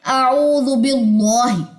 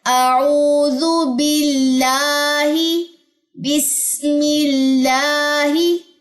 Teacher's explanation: اعوذ باللہ میں با کے نیچے زیر ہے، بسم اللہ میں میم کے نیچے زیر ہے، تو زیر آ جانے کے بعد اللہ کا جو نام ہے اس کے اندر یہ جو لام ہے یہ باریک پڑا جاتا ہے